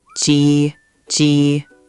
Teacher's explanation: First syllable, Ji, is tone one, high and flat, like holding a note in a song. · Flat like a sustained note. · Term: tone 1